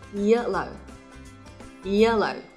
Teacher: Trong âm nhấn vào vị trí số 1 nhé.